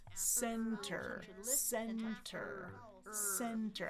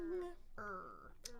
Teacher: Tongue on the bump, causing friction. Tongue is there, then it goes down.